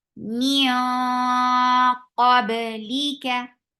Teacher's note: keep this ikhfa heavy by lifting your tongue up for qaf